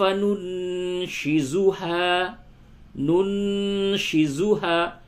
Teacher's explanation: اخفا ہوگا، نون ساکن کے بعد شین ہے